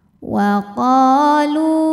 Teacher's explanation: Wa qalu, lu hukum tajwidnya adalah mad tabi'i dhahiri, sebab ada waw sukun sebelumnya berharokat dhammah. Cara bacanya, lam dipanjangkan 2 harokat juga.